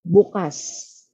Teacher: nandito ang diin sa ikalawang pantig